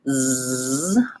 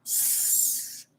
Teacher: the Z sound, z, I should be able to feel the vibration in my throat. Versus the S sound, s, there's no vibration in my throat. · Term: voicing